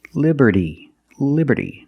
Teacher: the t in liberty is between vowels. So it's pronounced like a fast d.